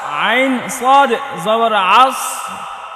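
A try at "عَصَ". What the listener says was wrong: এটা আইন সদ জবর, আইন সদ জবর বলা যাবে না, আমরা কোনো হরফ সদ পড়ি নাই, সদে সদে, আইন সদে জবর আউস, সদ মোটা করতে হবে।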